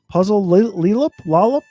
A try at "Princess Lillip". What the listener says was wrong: The first word is princess, not puzzle. Puzzle multiple times.